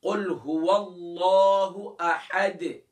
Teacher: اکثر پڑھتے ہیں قل هو الله احد اد, یعنی کہ آخر میں دال کو کلیئر نہیں کرتے, تو دال پر ہم نے قلقلہ بھی کرنا ہے